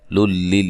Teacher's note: نون تنوین کا ادغام بلا غنہ ہے، غننے کے بغیر